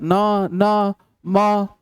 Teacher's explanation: नासिक्य वर्ण जिसका उच्चारण नाक के द्वारा होगा